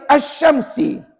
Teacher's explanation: Tidak berdengung pada bacaan sebab dia melibatkan huruf shin.